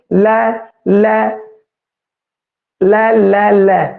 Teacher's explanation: लै है जिहड़ा वो दंती है, क्योंकि जीभ है जिहड़ी वो दंदां नूं छू रही है भाई